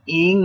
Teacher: Ing ikhfa, sukun bertemu huruf sin. Ing tahan 2 harkat.